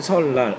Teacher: 리을 뒤에 니은이 리을로 바뀌었고요. 리을 앞에 니은이 리을로 바뀌었다라는 거예요. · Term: 순행적 유음화